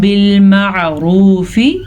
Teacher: بالمعروف عین کو واضح کریں، را کو پر پڑھیں.